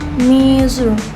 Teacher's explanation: Cara penyebutannya bunyi z seperti si tetapi bersuara, getarannya terasa di tenggorokan